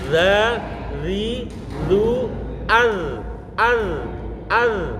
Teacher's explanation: Dan zal ini harus menahan desisan, tidak boleh za, zi, zu, nggak boleh begitu. Harus ditahan desisannya karena tidak mempunyai sifat hamas.